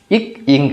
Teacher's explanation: இக் இங் அப்படின்றது அடிநாக்கு அடியன்னம்